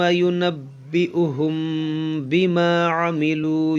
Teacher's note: یہاں میم ساکن کے بعد با ہے تو یہاں پر اخفاء شفوی کا قاعدہ لگے گا